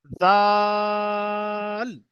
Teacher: এটা যখন উচ্চারণ করবেন সবাই, দেখেন এ, জিভের আগা এবং উপরের দাঁতের আগার সঙ্গে ঠেকবে, জিভের আগাটা গিয়ে উপরের দাঁতের আগার সঙ্গে ঠেকে জাল উচ্চারণ হবে।